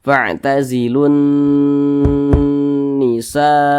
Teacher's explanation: Nun bertasdid ini ghunah musyaddadah cara membacanya diunahkan Nah diunahkan itu suaranya itu kita tahan ya kita panjangkan sejenak panjangnya berapa Dua harakat